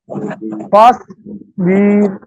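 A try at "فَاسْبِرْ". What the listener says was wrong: বীর একটু টান হয়ে গেল না? টান হবে না, আবার।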